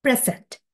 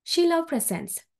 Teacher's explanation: the word present as a noun stress falls on the first syllable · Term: word stress